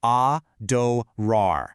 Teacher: But the real magic, that happens at the end. There is an incredibly strong, powerful stress on the final rar. Adorar. It actually requires your mouth to open wide, literally projecting that adoration outward.